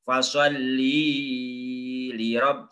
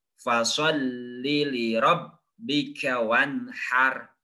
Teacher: Terus lamnya fasholli jangan dibaca panjang.